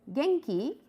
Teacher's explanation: you can hear see from the intonation it is rising